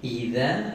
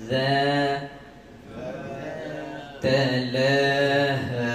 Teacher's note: Idza, zal dikeluarkan sebutan lidah.